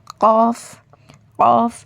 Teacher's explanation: soft palate से जब लगता है तो हर्फ कॉफ अदा होता है